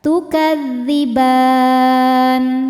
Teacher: Mad thabi'inya fathah panjang pada huruf ba, huruf yang disukunkan nya nun. Maka ba-nya panjang, boleh dua atau empat atau enam harakat asal konsisten dalam sekali baca. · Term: mad arid lisukun